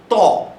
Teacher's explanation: ত তখন জিহার অগ্রভাগ দাঁতের ভেতরের অংশে এসে স্পর্শ করছে একটা প্রেস করছে এই প্রেস করার ফলেই কিন্তু এই উচ্চারণটা আমাদের তৈরি হচ্ছে আচ্ছা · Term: দন্তবর্ণ